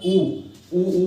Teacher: ऊ बोलते हैं तो हमारे ओठ जो होते हैं ना वो गोल गोल बनते हैं, उसे ओष्ठ है।